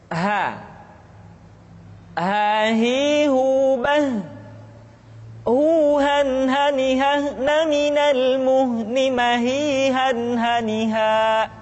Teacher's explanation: huruf ha dikeluarkan dari tenggorokan yang terjauh sama seperti kita mengucapkan huruf a